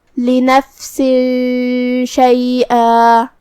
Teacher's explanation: اخفاء کا معنی ہے چھپا دینا، تو ہم یہاں تنوین کو چھپاتے ہوئے بغیر ظاہر کیے ہوئے لیکن غنہ کے ساتھ یہ حکم کو ادا کریں گے